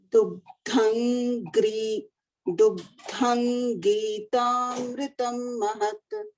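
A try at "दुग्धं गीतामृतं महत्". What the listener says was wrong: Perfect. Mahat.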